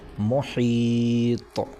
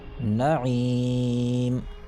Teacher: مد ہوگا اور 3 الف کے برابر کھینچ کر پڑھا جائے گا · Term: مد سکون عارضی وقفی